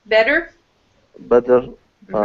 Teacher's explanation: with better, T turns into a D.